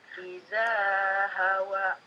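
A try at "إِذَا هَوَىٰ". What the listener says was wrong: Pendekan. Idanya pendekan, hawanya kurang panjang. Iza hawa. Hawa, dua harokat.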